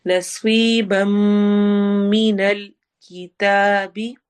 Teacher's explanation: ادغام ہو رہا ہے غنہ کے ساتھ، ناک میں آواز جائے گی